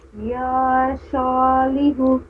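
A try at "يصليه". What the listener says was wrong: या शा नहीं पढ़ेंगे, या सा।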